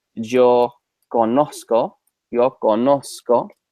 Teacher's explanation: Z in Spanish in almost every country is an S sound except in Spain where it's a that's uni a a th